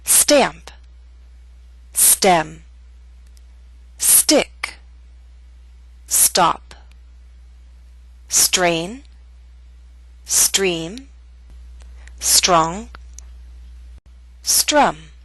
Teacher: with the s T we do not have a strong puff of air